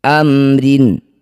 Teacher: Mim sukun bertemu bukan mim, bukan ba, disebut bacaan namanya izhar syafawi. Baca jelas bunyi mim, tidak usah dengung.